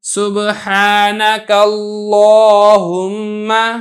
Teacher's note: سبحانک اللہم، اب یہاں پہ دیکھیں لفظ اللہ کا لام تھا، اس سے پہلے کاف پر زبر تھی تو میں نے لفظ اللہ کے لام کو موٹا کر کے یعنی پر کر کے ادا کیا ہے